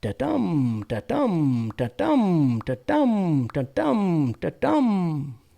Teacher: An iamb is an unstressed syllable followed by a stressed syllable. That might sound like da-dum, da-dum, da-dum, da-dum, da-dum, da-dum. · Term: iambic